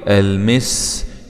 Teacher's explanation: سين سكون مع الصفير